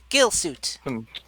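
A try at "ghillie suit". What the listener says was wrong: no, Gilly with E at the end.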